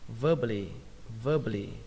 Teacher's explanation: Trọng âm ở đây rơi vào âm đầu tiên, âm ver